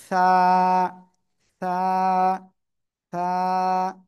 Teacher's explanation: সামনের উপরের দুই দাঁতের আগার সাথে লাগিয়ে এক আলিফটা নিয়ে নরম করে হালকা বাতাস বের করে উচ্চারণ করতে হবে